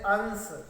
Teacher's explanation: निकलती है मुख से बहुत कम शवास निकलती है जैसे अंश नाक से अधिक शवास निकल रही है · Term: अनुस्वार